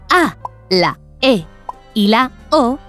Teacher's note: la a la e y la o son vocales abiertas se llaman así porque para pronunciarlas abrimos la boca